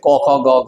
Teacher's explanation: ক বর্গের প্রথম দুটি হবে অঘোষ পরের গুলি হবে ঘোষ